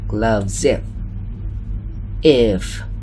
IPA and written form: ɡlʌvz-if (gloves if)